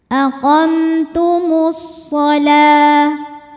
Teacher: Lalu ada hukum alif lam yang dinamakan dengan alif lam syamsiyah. Karena alif lam menghadapi huruf syamsiyah yaitu shad, maka alif lam tidak kita baca, atau biasa disebut dengan idgham syamsi.